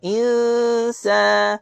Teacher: Pada ayat ini jaga nun mati berjumpa dengan sin. Kat situ ada dengung ikhfa hakiki.